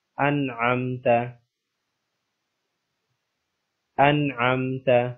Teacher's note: نون ساکن کے بعد عین آ رہا ہے، اس لیے یہاں پر غنہ نہیں کریں گے بلکہ اس کو واضح کر کے پڑھیں گے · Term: اظہار